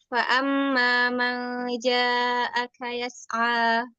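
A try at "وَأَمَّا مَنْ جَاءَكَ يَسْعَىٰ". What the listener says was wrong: Pakai wau. Pakai wau.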